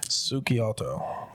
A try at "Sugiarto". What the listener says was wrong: Sugiarto. You've seen it written down. You know there's no L in there.